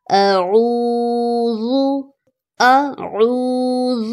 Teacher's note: عین اور حمزہ دونوں کی وائس میں فرق رکھنا ہے۔ واو مدہ ہے، اس کو کھینچا جائے گا، اور ذال کو نرمی سے پڑھا جائے گا۔